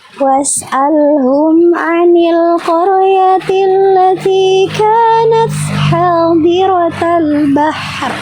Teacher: mohon dikoreksi kalau salah, ro-nya terdengarnya tipis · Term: ro sukun